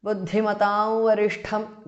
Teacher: The Anuswara changes to the nasal of Va.